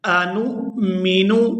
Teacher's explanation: قالوا انؤمن، آگے نون کو حمزہ کے ساتھ ملائیں گے تو جھٹکے کے ساتھ ادا کریں گے